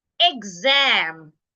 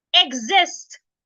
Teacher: because I have a voice sound after the X the X should sound G